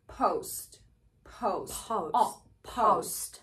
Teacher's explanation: don't round your lips too much for the u sound yeah you just bring them together to a neutral position · the American version of this diphthong starts with a rounded a sound. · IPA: /oʊ/